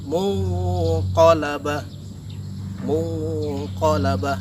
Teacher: Di situ ada nun mati bertemu dengan huruf qaf, maka nun matinya disamarkan menjadi bentuk NG. Jadi tidak N lagi tapi menjadi NG. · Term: ikhfa hakiki